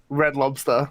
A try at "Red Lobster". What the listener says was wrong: Yeah, lobster. Yeah, see, you said lobster. Yeah, like the B got stuck behind your teeth or something. Lobster.